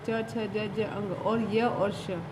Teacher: इनका उच्चारण करते समय हमारी जो जिह्वा होती है, यानी जीभ होती है, वो तालु को स्पर्श करती है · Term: तालव्य